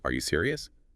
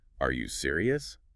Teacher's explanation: It barely sounds like a question. But add that little upward flick at the end